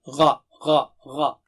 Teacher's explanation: غین جو ہے حلق کے اوپر کے حصے سے ادا ہوتا ہے غا۔ غا آپ خود فیل کر سکتے ہیں وائبریشن کو حلق کی، غا غا غا۔